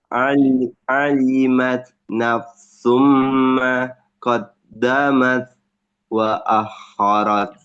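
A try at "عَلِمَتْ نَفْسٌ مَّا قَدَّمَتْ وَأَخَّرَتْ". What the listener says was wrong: ya lagi. Nafsum ma. Agak ditahan lagi.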